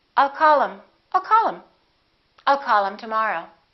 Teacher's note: instead of saying call him, we'll drop the H